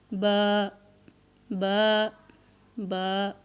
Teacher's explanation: با دونوں ہونٹوں کے تر حصہ سے ادا ہوتا ہے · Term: حروف شفویہ